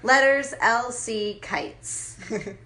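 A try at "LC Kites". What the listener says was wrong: sounded like you put an end in there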